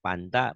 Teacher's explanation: Kayak orang Sunda nggak bisa F ya.